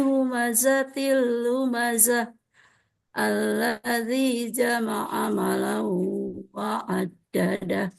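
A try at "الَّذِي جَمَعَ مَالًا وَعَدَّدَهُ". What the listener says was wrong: Alau, maknya panjang Bu. Alladzi jama'a malau. maknya pendek kalau Ibu Eros. Malau, maknya panjang kan Bu?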